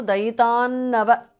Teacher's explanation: because of సంధి అనుస్వార changes to న దేర్